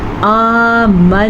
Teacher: ربنا، را کو پر پڑا، مد کو کھینچ کے پڑا. آمنا، نون کا غنہ ادا کیا کیونکہ یہاں پہ نون پہ شد ہے. الف مدہ کو ادا کیا، الف کو یعنی کہ کھینچ کے پڑا، الف سے پہلے زبر ہے تو یہ الف مدہ ہے.